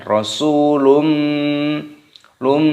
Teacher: nyetop yakni dua ketukan luminouz dhomah tanwin bertemu dengan huruf mim hukumnya dibaca Idgham Bighunnah cara membacanya dimasukkan dan didengungkan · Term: idgham bi gunnah